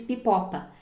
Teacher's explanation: Como tinham 2 P's nas sílabas anteriores, ela acabou harmonizando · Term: harmonia consonantal